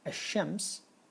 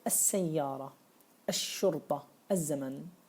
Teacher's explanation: Ash-shams, you won't be able to pronounce the lam. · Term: shamsiyatun